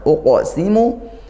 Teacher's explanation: qof sukun dibaca dipantulkan yaitu qalqalah sughro · Uqsimu qaf sukun dibantulkan yaitu qalqalah sughra. Qalqalah sughra artinya pantulannya tidak sekuat yang kalau waqaf, tapi karena ini huruf qaf juga huruf tebal, pantulannya tetap pantulan kuat.